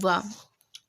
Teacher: दंतोष्ट मतलब ऊपर के दांत और निचला होठ, इनसे बोला जाता है